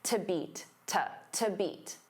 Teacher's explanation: Now to beat because to is a preposition it becomes unstressed.